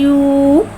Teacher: वाव साकिन है, वाव साकिन से पहले पेश आ रहा है, वाव मद्दा हो रहा है, लिया तो वाव मद्दा को एक अलिफ यानी 2 हरकत के बराबर खींच के पढ़ेंगे